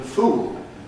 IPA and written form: fuːl (fool)